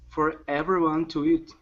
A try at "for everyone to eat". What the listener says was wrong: There you go. Much better. Much better job.